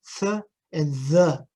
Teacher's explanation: a fricative that can be achieved by putting the tip of the tongue right between the teeth and creating some friction